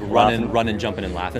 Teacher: It's very bush, very country to just drop the G. · I read that Australians usually kind of leave off the G.